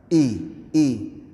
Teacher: I di sini makharijul hurufnya di pangkal tenggorokan. Yang mana huruf I ini perlu dibaca terang dan jelas.